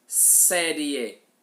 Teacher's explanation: o I é a semivogal e o E é uma vogal. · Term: ditongo crescente